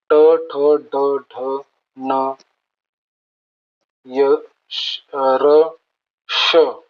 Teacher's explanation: मूर्धल्य म्हणजे तालव्याच्या आणि कंठाच्या मधला भाग.